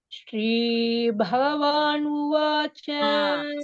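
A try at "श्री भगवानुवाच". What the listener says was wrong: See what happens with all the South Indians? The ga is becoming ha, not bah, not her. Bhaga. Shri Bhagavanuvacha.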